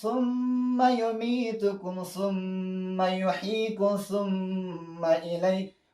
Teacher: میم مشدده دقیقا د خیشوم نه ادا کېږي